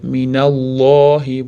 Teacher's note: Alloh lafzi fathadan keyin kelganligi uchun oga, ya'ni yo'g'on qilib minallohi bo'lib lam oga o'qilyapti.